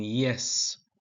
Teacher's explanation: y in yes is formed near the hard palate